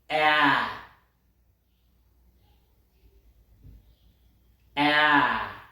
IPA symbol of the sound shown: ӕ